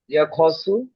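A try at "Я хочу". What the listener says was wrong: খাচ্চু আ উচ্চারণ হবে ইয়া খাচ্চু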